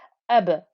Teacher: because ba is one of those qalqala letters, you can hear the noise bounce back because of the sukoon